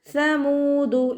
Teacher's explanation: സ ലൈറ്റ് ആക്കിയിട്ട് ഉച്ചരിക്കുക. സ ഉച്ചരിക്കുമ്പോഴും കുറച്ച് എയർ പുറത്തോട്ട് പോണ സൗണ്ടിൽ വേണം ഉച്ചരിക്കാൻ, സീനായി പോവരുത്.